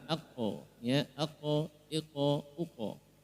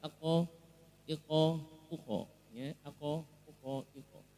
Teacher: ketika sukun qaf ini bunyinya o, bunyinya tebal. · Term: qalqalah